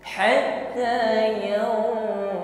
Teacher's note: Huruf dhad tasydid ditekan membacanya, ditebalkan bunyi hurufnya. Jangan dilemahkan ya.